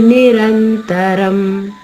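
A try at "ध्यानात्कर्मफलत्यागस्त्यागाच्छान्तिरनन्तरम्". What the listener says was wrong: అమ్మా అమ్మా మీరు నిరంతరం పాడారమ్మా, అది నిరంతరం కాదు, రనంతరం.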